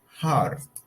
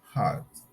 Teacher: the r is not pronounced